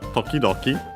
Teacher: Notice that the second Toki gets voiced, the To, and so we have the duck 10 becomes Doki.